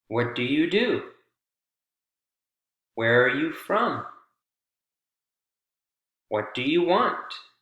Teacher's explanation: goes high then low then high again